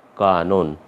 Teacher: এই মধ্য অয়ের উচ্চারণ ওকারের মতো হয়ে যাচ্ছে, দিয়ে আমরা লিখছি কানন, কয়েকার দন্ত নয় ওকার দন্ত ন, উচ্চারণটা হবে কানন।